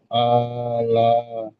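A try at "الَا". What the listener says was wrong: হ্যাঁ, লামটা একটু টান হবে না, আলা।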